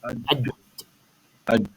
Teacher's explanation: Tengah lidah tu kena pada lelangit.